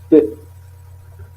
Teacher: un blocage de l'air au niveau des lèvres. Les deux lèvres, nous avons le son P. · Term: les bilabiales